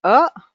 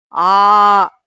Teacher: so the openness of the mouth for the pronunciation for hrasva akara and for the dirgha or pluta akaras is different.